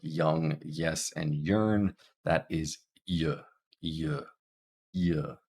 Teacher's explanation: y y this one's a little bit harder to feel but you'll feel the center of your tongue being pushed towards the top of your mouth but not quite touching young and I should mention this one is voiced as well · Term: palal sound